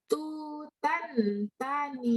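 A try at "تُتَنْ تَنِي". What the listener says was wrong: Tutannya jadi ikhfa, tutang. Ikhfa. Nun mati atau tanun ketemu ta ikhfa. Tutang. Ya, mati tangnya ikhfa ya.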